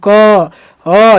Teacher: अगर क वर्ग का उच्चारण करेंगे तो कंठ की तरफ खिंचा जाएगा क अ जीभ पीछे की तरफ जाएगी अगर च वर्ग का